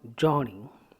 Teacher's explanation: Ni is a weaker one at the end of the word, so it should not be stressed. So journey, the sound is coming down. So journey, ja is to be stressed.